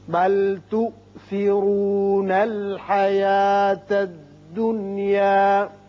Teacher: ظاہری طور پر تو آپ سوچیں گے کہ یہاں ادغام بغنہ ہونا چاہیے، لیکن ادغام بغنہ جو ہے اس کی شرط تھی کہ دو کلموں میں ہو، نون ساکن اور جو اس کے حروف ہیں غنے کے ادغام کے ینمو، اگر دو کلمے میں ہوں تو وہاں ادغام بغنہ ہوتا ہے۔ یہ ایک ہی کلمہ ہے، لہذا یہاں ادغام نہیں ہوگا بلکہ اظہار مطلق اسے کہتے ہیں، نون کا اظہار ہوگا۔